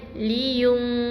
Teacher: Maksudnya kita tak bunyikan n. Jadi bukan liyun. Kita baca dengan liyung, sengau. Hujung lidah jangan tekan tepat kepada, jangan tekan pada bahagian langit lembut. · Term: Ifa hakiki